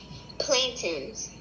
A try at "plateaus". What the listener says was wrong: Not plantains. There's that E. When you see EAO in a word, it usually makes the long O sound. So EAO together usually, not always, but usually makes the long O sound.